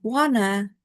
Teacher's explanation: And then in wanna or want to, the T sound at the end of want assimilates into the nasal N sound because of the rapid pace of the children's speech, and resulting in a double N sound. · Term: assimilation